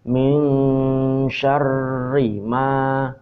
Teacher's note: Ikhfa ausyad. Bacanya ini tetap n, tapi nanti ujung-ujungnya dia mulai masuk ke shin. Jadi n hampir serupa ang.